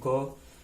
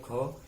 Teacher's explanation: सघोष अल्प प्राण में ग और सघोष महाप्राण में घ